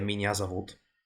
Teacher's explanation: it sounds like an a because it's effectively reduced into a schwa sound when it's not stressed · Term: reduction